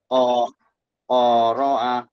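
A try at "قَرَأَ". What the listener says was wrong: Koro'a pendek. Koro'anya pendek.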